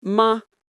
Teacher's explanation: A very common example is the word ma, the question particle. It's never pronounced as a full tone. It stays light and short · To understand the neutral tone, imagine your voice fading gently without any rise or fall. It doesn't carry stress. It doesn't need emphasis.